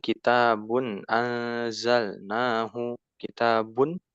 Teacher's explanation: Kitabun, bun jelas tanwin, ya. Dan tidak adanya gunnah kamilah.